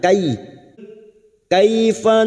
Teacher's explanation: fathah bertemu Ya Sukun kita lunakkan